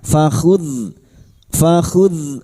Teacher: sukun jangan dipantulkan ya bukan qalqalah